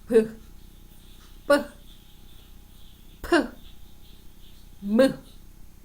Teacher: 두 입술을 붙였다 떼면 내는 소리 양수음이죠.